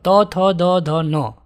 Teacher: दांत और जीभ के स्पर्श वाले होते हैं पूरा त वर्ग होता है